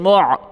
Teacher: میم کو عین کے ساتھ ملائیں، عین کو گلے سے زور لگا کے نکالیں۔ میم عین پیش مع، میم عین پیش مع، والمع، والمع۔